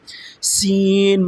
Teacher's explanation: سین کو ادا کرتے ہوئے بھی سیٹی کی طرح تیز آواز نکلتی ہے